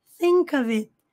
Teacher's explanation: Olha esse F com som de V.